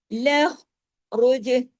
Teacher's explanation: जीम पे कलकला करना है यानी हिला देना है